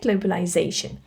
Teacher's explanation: globalization, you need to stress this zation. Because in English, when a word ends with yon, you need to stress this syllable.